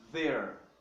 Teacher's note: Não é um grande problema você falar there. A pronúncia mais correta é aquela língua no meio dos dentes